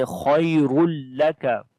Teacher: And lam and kaf we read in light sound.